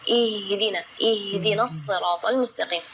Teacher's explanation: Ya, itu tidak boleh, itu keluarnya dari dada, sedangkan makhraj huruf H itu adalah dari tenggorokan. Jadi keluarnya tipis karena H itu termasuk huruf di antara 28 huruf hijaiyah yang paling lemah adalah huruf H.